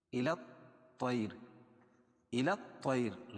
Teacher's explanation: طا کو موٹا پڑھیں گے حروف مستعلیہ میں سے